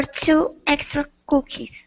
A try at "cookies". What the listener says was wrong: You said cookies. So your lips are moving in. Hold your mouth open. it's k.